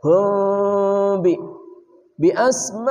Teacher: mim mati bertemu ba namanya ikhfa syafawi samar dan dengung